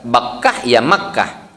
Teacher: huruf ba dengan huruf ma makhrajnya sama tuh sama-sama huruf bibir